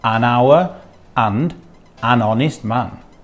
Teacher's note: Hour and honest in phonetics both begin with vowel sounds